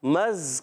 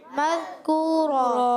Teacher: تو یہاں ادغام مع الغنہ ہوگا، ایک الف کا غنہ کریں گے. میم کو زال سے ملائیں گے، زال کو زا نہیں پڑھنا. بعض بچے مز پڑھ دیتے ہیں، مز، یہ غلط.